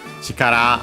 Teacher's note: an accent on the last syllable